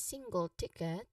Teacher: single ticket you emphasize both on the first syllable